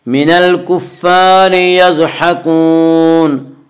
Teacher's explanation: ज़ाद को पुर पढ़ेंगे। ज़ाद हुरूफ मुस्तालिया में से है। हुरूफ मुस्तालिया 7 हैं जिनका मजमुआ खुस्सा ज़ब्त नक़िज़ है, जो हमेशा हर हाल में पुर पढ़े जाते हैं।